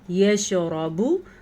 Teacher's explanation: را کو پر پڑھنا ہے کیونکہ را کے اوپر زبر ہے، زبر کی صورت میں را پر پڑھی جائے گی، پیش کی صورت میں بھی را پر پڑھی جائے گی، اگر را کے نیچے زیر ہے تو را بالکل باریک پڑھی جائے گی، ٹھیک ہے۔